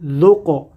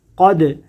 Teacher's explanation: اس کو ہم پڑھیں گے ذق، قاف دال زبر قد، یہاں بھی قلقلہ ہو رہا ہے، دال ساکن ہے اس لیے یہاں قلقلہ ہو رہا ہے